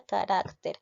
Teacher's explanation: carácter es una palabra grave porque lleva la mayor fuerza de voz en la penúltima sílaba la tildó porque porque está terminando en ere ya carácter entonces